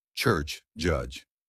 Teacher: ts, ch and dzed j. These start like t or d then release into s or z. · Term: Affricates